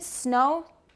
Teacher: air air passes through the nostrils the vocal folds are vibrating we have to mention that the air goes through the nostrils and not out of the mouth · So the tip of the tongue touches the alveolar ridge. The lips are apart. The lips are rounded.